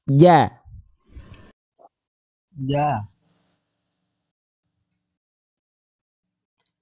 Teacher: Karena jim nggak punya sifat hams. Jim itu sifatnya jahar. Jadi dia dilafalkan tidak mengeluarkan percikan nafas.